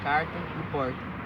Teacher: o dialeto caipira se caracteriza pelo uso do R retroflexo, como em carta e porta